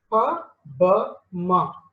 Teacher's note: I am using my lips, right? So that's why these sounds are called bilabial. Okay, you are closing your two lips, right?